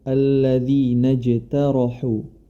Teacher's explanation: alladzi najtarohu huruf ta ya memiliki sifat istifal atau tipis kemudian setelah huruf ta ada huruf ro yang berharakat fathah maka RO di sini dibaca dengan tebal